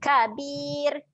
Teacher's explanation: ra dekat hujung ni, ra yang nipis.